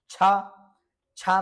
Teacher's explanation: छ में आपका तालु है किंतु कंठ से उच्चारण नहीं है।